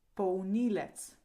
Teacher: The first L sounds like U.